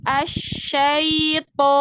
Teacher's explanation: Nah, ya sukunnya kan masuk ke hidung. Syai jadi bindeng.